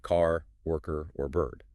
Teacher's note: In American English, linguists identify what is called the rhotic R. And this requires a really distinct muscular effort.